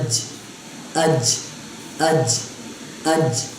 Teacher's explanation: درمیان والا جو حصہ ہوتا ہے اوپر کے تالو کے ساتھ جب لگتا ہے تو اس سے کیا ادا ہوتا ہے، جیم